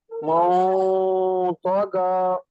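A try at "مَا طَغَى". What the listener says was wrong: কিন্তু আবার শেষে এসে আরেকটা ভুল করে ফেলেছি, মোটাকে চিকন করে ফেলেছি, গ হবে, গা না। তাহলে আবার বলেন দেখি, তগ, মাও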